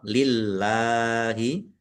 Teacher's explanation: Allahnya dibaca tipis karena harakat di depannya kasrah.